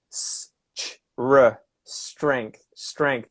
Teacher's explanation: It's a very weird kind of consonant cluster that's not common, I don't think, in other languages to have this s sound at the start.